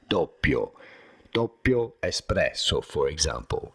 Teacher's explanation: You do want to stress on the first syllable and insist a little bit on the double P because there is a double P and it matters in Italian.